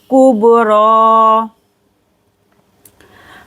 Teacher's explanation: बा पर करेंगे कलकला और आ को खींच कर पढ़ेंगे, खरा जबर है यहाँ पर, या को नहीं पढ़ना है, कुबरा।